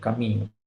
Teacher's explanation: A nossa é uma nasal mais palatal e em muitas falas do Brasil, muito comum que essa nasal palatal ficou já como uma semivogal